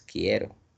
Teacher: en quiero la U no suena, no tiene sonido. Solo está sonando la I y la E. O sea que hay solo diptongo creciente.